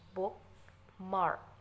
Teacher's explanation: Nah, bookmark ini memiliki 2 stressed syllable. Jika dilafalkan seperti ini, book mark.